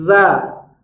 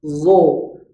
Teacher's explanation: Tapi kalau huruf zo yang berharokat fathah, maka bunyi vokalnya ikut tebal, zo. Tidak dibaca za, tapi zo.